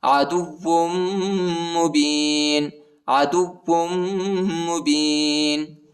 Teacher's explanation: واو کو میم کے ساتھ ملائیں گے، ادھر غنہ بھی ہے